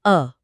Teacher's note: इसमें तो जीभ एकदम रिलैक्स है बीच में। इसीलिए अकेला मध्य स्वर है।